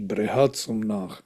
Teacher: The stress is on the second syllable, which tells us that this is Bahuvrihi compound.